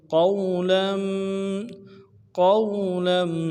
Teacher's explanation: قاف کو واو کے ساتھ ملانا ہے، واو لین ہے، قاف کو موٹا کریں گے ، واو لین کو بغیر کھینچے پڑھیں گے، لام کے اوپر